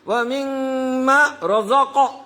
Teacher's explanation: رزق اس کو جرک دینا پڑے گا، جھٹکا دینا پڑے گا، کیونکہ وہ قلقلہ کا ایک حروف ہے